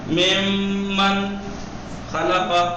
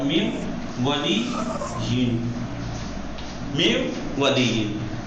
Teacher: غنہ کے ساتھ ہوگا یعنی ناک کی فضا سے ادا ہوگا، تھوڑا کھینچ کے، تھوڑا کھینچ کے ادا ہوگا